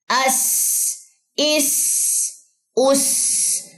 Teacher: सीन में सीटी होती है